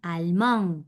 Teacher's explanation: me quedaba en el fonema de la A nasal, allemand, porque la D final no se pronuncia.